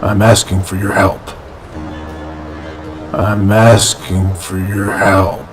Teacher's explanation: notice the downward intonation at the end